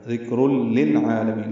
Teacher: الا لا الف مدہ ہے، ذکر ذال کاف باریک ہے، را پر ہے، کاف پہ ہمس ہے، را پر دو پیشے ہونے کی وجہ سے را پر ہے، را کو لام سے ملانا ہے، ادغام کامل ہے، تنوین کے بعد لام آیا اس لیے ادغام ہو گیا. ذکر للعالمین، لام ساکن پہ اظہار، عین وسط حلق سے ادا کریں گے، 2 حرکات لمبا کریں گے، لام کو جلدی پڑھیں گے، مین میں میم کو لمبا کر دیں گے، نون ساکن پہ اظہار ہوگا.